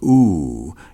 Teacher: you start in the back of the mouth ah and then ooh you fill the mouth and M closes the mouth